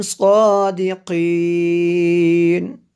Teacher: میں نے آخر سے تھوڑا سا لمبا کیا، یہاں پہ مد عارض کریں گے